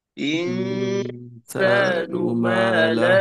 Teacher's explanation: এখানে ইখফা হাকিকি হবে এবং পাতলা হবে, মোটা না।